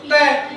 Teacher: तो जीभ हमारी कहाँ मुड़ती है? पीछे की तरफ मुड़ती है। तो जो तालब का जो पिछला हिस्सा होता है उसमें जाके लगती है। · तो इसको मूर्धन्य कहते हैं, जहाँ पर हमारी जीभ तालब के पिछले हिस्से पर जाके टकराए